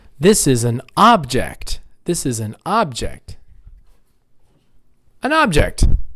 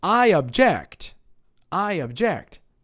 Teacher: nouns on the first syllable verbs on the second